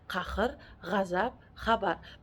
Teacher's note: Q, x, gʼ tovushlaridan keyin kelganda til orqaroq, orqa qator unlisi kabi talaffuz qilinadi.